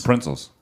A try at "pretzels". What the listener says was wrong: There is at least one N in there, which there should be 0 N's.